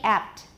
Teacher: It's usually unexploded because there's another consonant after it.